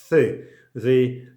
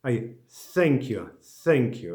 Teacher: Th. You put your tongue between upper and lower teeth, between top and bottom teeth. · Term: th sound